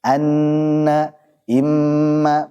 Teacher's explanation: Gunnahnya dipanjangkan. Ada pada nun dan mim yang bertasydid. Anna, imma, panjangkan gunnahnya. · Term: gunnah mutawwalah